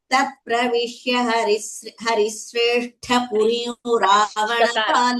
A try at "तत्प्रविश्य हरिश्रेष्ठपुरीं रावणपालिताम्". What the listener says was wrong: Not sakara, not sa, but sha. Harishreshtha. You're saying Harisreshtha, not Haris, but Harish.